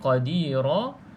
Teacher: kita panggil ra tafkhim, iaitu ra yang kita baca dengan tebal. Sebab apa? Sebab ra berbaris fathah.